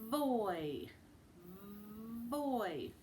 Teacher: See how I'm biting my bottom lip? And I'm turning my voice on. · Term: V sound